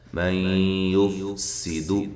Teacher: سین کو باریک سیٹی کے ساتھ